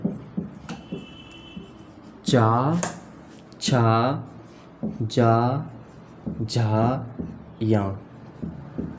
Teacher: ताल जो हमारा तालु होता है उसके द्वारा इनका उच्चारण होता है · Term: तालव्य